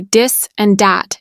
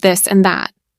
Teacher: In parts of the US, people say dis and dat instead of this and that.